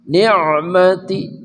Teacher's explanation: ain ya, tengah kerongkongan.